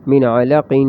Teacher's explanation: وقف میں قلقلہ ہوگا دو نقطوں والے قاف پہ